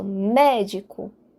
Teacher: a sílaba mais forte é o mé ante penúltima sílaba uma palavra proparoxítona o · Reparem, médico, de trás para frente, eu tenho a última sílaba com o co, a penúltima sílaba o dio e a antepenúltima sílaba o mé. E é o mé que eu enfatizo, médico. A sílaba mais forte é o mé.